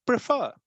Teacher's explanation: the first syllable is unstressed, second is stressed. So if you say prefer, we say prefer, the first syllable pre is kind of unstressed, and fur, last one. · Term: iambic